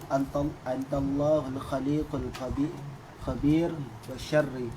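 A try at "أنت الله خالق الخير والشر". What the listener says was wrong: Bukan khabir, khairi wa syarri. Mana khabir wa syarri? Khairi wa syarri.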